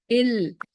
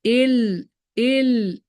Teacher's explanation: the tip of the tongue is touching the upper teeth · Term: Lamb